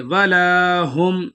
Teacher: لام کو ایک الف کی مقدار کھینچ کے پڑھیں گے